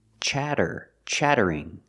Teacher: The double T is pronounced as a fast D, chatter, chattering.